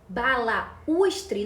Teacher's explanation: Cai na mesma situação que baú. Balaústre, nós separamos, ó, percebam, nós separamos o U do A. Nós temos um hiato aqui.